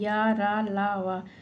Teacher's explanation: ये सभी य र ल व अंतस्थ व्यंजन सघोष और अल्पप्राण होता है।